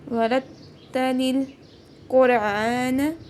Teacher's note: قاف حروف قلقلہ میں آ رہا ہے اور مستعلیہ میں بھی ہے، تو تھوڑا جھٹکا دے گے اور موٹا پڑھیں گے · را کے اوپر زبر ہے، اس کو بھی موٹا پڑھیں گے، یہاں پہ تشدید ہے، اس کو دباؤ کے ساتھ پڑھیں گے